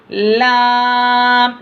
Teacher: लाम से हरफी है, इसको लंबा खींचना और आवाज़ को नाक में जाने नहीं देना